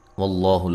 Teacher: واللہ لفظ اللہ کو موٹا ادا کریں گے، اس سے پہلے حرف پر زبر ہے